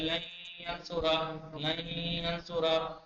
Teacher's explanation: نون صاف نہیں بولیں گے ناک سے بولیں گے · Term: غنہ